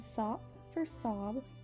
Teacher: The voiced B is replaced by the voiceless P